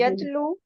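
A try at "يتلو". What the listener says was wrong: ला कहाँ से आ गया इसमें? मुतारे में यत लू होता है, यत जबर आती है, और यतलू यतलूना ततलू अतलूना।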